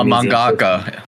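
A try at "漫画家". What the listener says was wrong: Mangaka is ka, not ga.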